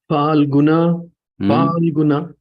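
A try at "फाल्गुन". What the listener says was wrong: Not fur. Not F. Not fur. Falguna. Falguna.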